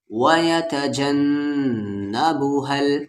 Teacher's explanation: نون پر تشدید ہے یعنی غنہ ہوگا